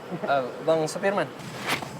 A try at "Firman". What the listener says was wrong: Nama saya Firman, pakai F. Tahu saya supir, tapi nama saya Firman. Firman, pakai F.